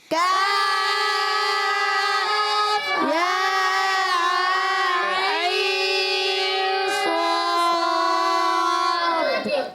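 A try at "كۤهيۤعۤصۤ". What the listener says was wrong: عین کے نون میں اخفا کا غنہ بھی کرنا ہے. ٹھیک ہے، یہ دیکھیں عین کے نون میں نون ساکن کے بعد صاد آ رہا ہے. کاف ہا یا عین صاد.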